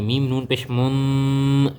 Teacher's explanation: نون ساکن کے بعد حروف اخفا میں سے کاف آئی ہوئی ہے، یہاں پر اخفا کا قاعدہ لگے گا، ہم آواز کو ناک میں چھپا کر پڑھیں گے ، ایک الف کے برابر لمبا کریں گے، میم نون پیش